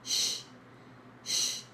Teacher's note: It never sounds like ch, like ch in chocolate. It sounds like sh, as in she or shy, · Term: CH sound